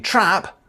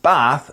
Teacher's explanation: there's just a difference in length but not quality so short are in trap but long in bath and palm